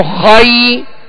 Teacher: اسی طرح جب ہم یا لین کو ادا کریں گے تو خائی، یعنی زبر ادا جب کریں گے تو آواز اور منہ کھولیں گے جیسے خا، خائی. اب جب یا ادا کریں گے تو آواز کو گرا دیں گے